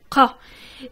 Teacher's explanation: Eh bien ce son, comme tu le vois sur l'image que je mets à l'écran, il sort du fond du palais, ce qu'on appelle le palais mou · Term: le son qa